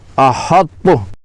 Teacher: پہلے منہ کو تا کے لیے پر کریں، بھاری کریں، پھر تا ادا کریں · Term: ادغام ناقص